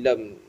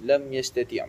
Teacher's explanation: Mim mati bertemu dengan ya. Izhar syafawi. Jelaskan saja bacaannya. Lam. Tak didengung, tak ada apa terus.